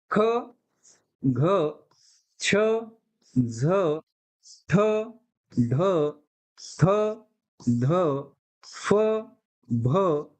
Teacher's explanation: ज्या व्यंजनाच्या उच्चारणामध्ये ह ची अर्थछटा आहे त्याला काय म्हणतात महाप्राण व्यंजन असं म्हणतात आणि त्याचा मूळ आधार काय आहे ह आहे म्हणजे